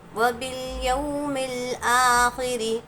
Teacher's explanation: حمزہ پر کھڑا زبر ہے، اس لیے اس کو ایک الف کے برابر کھینچیں گے